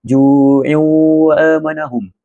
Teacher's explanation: Tanwin kasrah ju'u bertemu dengan huruf waw. Bacaan ia perlu dibaca dengan dengung dan ditahan pada 2 harakat. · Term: idgham ma'al gunnah